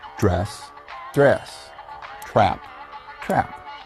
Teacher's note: A crucial part of the famous drawl is the Southern vowel shift. In the South, the tongue is raised, making vowels higher, as in dress, dress, trap, trap.